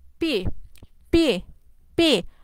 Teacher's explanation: আমাদের কিন্তু দুই ঠোঁট কিন্তু একসাথে লাগে, দুই ঠোঁট একসাথে লেগে তারপর কিন্তু আলাদা হয়ে যায়